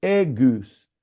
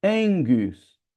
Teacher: O primeiro tem que se tornar um gama nasal, fica angus, ok?